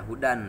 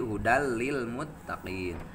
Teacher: Patokanana di mana-mana nun pae sareng tanwin mayunan salah sahijina huruf idgom bila gunnah anu dua maka macana kudu diidgomkeun tapi henteu make gunnah. Contona henteu aya dina sakalimah ngan aya dina dua kalimah hungkul.